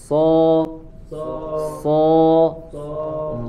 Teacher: sama dengan huruf sa tapi dengan kondisi lidah yang berbeda, diangkat pangkal lidahnya sehingga menghasilkan suara yang tebal.